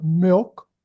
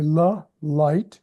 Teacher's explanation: you don't twist the tongue as much for milk as you do for la, light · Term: dark L